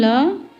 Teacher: पार्श्विक व्यंजन वह होता है जिसका उच्चारण करते समय हवा जीभ के दोनों किनारों से निकलती है। हिंदी में केवल ल व्यंजन पार्श्विक है।